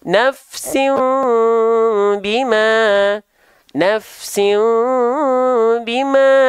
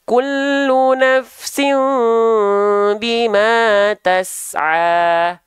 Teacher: Iqlab itu adalah mim kecil berwarna biru muda, pengganti nun mati atau tanwin, ketika bertemu dengan huruf ba, tahan bunyi mimnya, disertai dengan dengung 2 harokat.